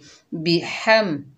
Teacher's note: बगैर खींचे पढ़ेंगे बी, हा के ऊपर ज़बर, आगे मीम साकिन, हा को मीम से मिलाएंगे और हा को हलक के दरमियान से अदा करेंगे